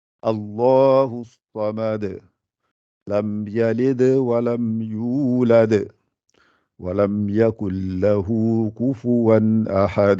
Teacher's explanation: Il faut que ça rebondisse, quoi, le dal, qalqala.